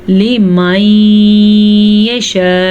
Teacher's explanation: یہ لمبی مد تھی، اسے 5 سیکنڈ تک لمبا کرنا ہے آپ نے